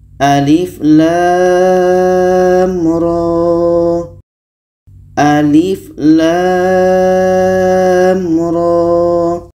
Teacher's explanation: Alif ini pendek saja sedangkan lam 6 harkat ro ini dibaca Dua harkat